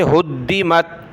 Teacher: ہا کو دال کے ساتھ ملایا، دال کو سخت کیا تشدید کی وجہ سے